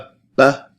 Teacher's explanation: and they are marked with a sheda sheda means intense and basically doubles the length at which you hold the consonant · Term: doubled